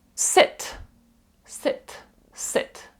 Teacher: Ви чуєте там майже и звучить але воно між и і і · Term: коротке і